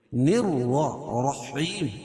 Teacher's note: رائے مشددہ کے اوپر زبر یہ پیش ہو تو را پور پڑھی جاتی ہے، نررحیم، اور وقف کی صورت میں یہ مد عارض وقفی ہوگا۔